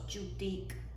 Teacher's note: it starts as a stop, so all air stopped, and then when the sound is released, some air that you can hear kind of a hissing sound. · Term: post-alveolar affricates